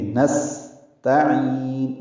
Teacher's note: کو لمبا کرنا ہے، نستعین، ان کو سین سے ملانا ہے، صفیر کی آواز سے ادا کرتے ہوئے ہم کریں گے، یعنی سین کی آواز میں سانس جاری رکھیں گے ، نستعین باریک پڑھیں گے، تا عین وسط حلق سے ادا